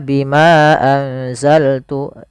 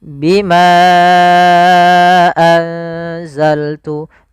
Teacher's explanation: maka Bimanya kita panjangkan sepanjang empat harakat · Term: Mad Jaiz munfasil, mad jaiz munfasil